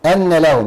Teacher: الهمزه محققه طبعا عشان همزه قطع والنون مشدده بمقدار حركتين واللام مظهره ايوه والهاء من من حروف الهمس والميم مظهره ا من ح